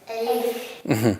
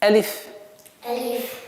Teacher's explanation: Не надо растягивать алиф, а резко.